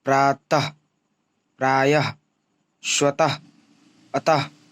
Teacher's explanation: इसका उच्चारण ह हलंत के समान होता है। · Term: विसर्ग